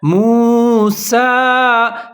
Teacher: سین کے اوپر پھر کھڑا زبر آ رہا ہے، اس کو لمبا کر کے پڑھیں گے